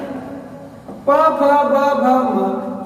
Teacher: अब मैं अगर त थ द देखूं तो त थ द ध न, अब ये क्या होता है, ये देखिए जीवान दांतों से टकराती है, हवा दांत पर प्रेशर पड़ता है, ये सारे वर्ण कहलाते हैं दंत्य। प फ ब भ म, इनका उच्चारण अगर आप करके देखेंगे तो होठ आपस में टकराते हैं